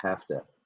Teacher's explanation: Here you're replacing the V sound to F.